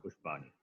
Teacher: it should be Murdhanya Shakara. It is not Talavya Shakara.